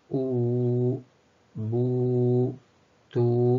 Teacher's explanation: Ketika ada waw sukun, sebelumnya ada huruf berharokat dhammah seperti u, bu, tu, maka ini keluar dari tempat keluar yang disebut dengan al-jawf